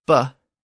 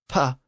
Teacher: the B sound is the voiced version and the P sound is the unvoiced version